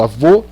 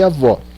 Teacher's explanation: Avô tem O fechado, então eu uso O minúsculo, avô. Avó tem O aberto, então eu uso avó, tá?